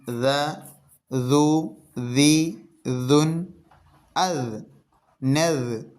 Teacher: നാവിൻ്റെ തലപ്പും മേലെ മുൻപല്ലിൻ്റെ തലപ്പും ഇത് രണ്ടും കൂടി കൂട്ടി യോജിക്കുമ്പോഴാണ് ദാൽ ഉച്ചരിക്കുക.